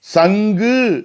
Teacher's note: சங்கு என்று சொல்லப்போனால் அங்கே வரக்கூடிய கு இருக்குது பாருங்க, கூன்னு சொல்லக்கூடாது. அங்கே உச்சரிப்பு ஜி மாதிரி உச்சரிக்குது.